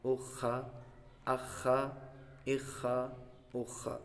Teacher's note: خا کا مخارج یہ حلق کے اوپر والے حصے سے ادا ہوتا ہے